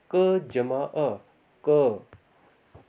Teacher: अब ये क व्यंजन जो है, इसमें अ की ध्वनि भी आ रही है